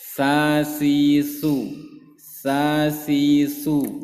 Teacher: sampai seperti ini sampai keluar tidak seperti seperti yang digambar tapi dia hanya sekedar menyentuh ujung lidah menyentuh bagian gigi seri ujung gigi seri bagian atas